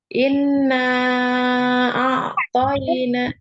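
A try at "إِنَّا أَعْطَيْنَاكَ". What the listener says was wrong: Dengungnya ditahan. Itu ditahan ya, panjang.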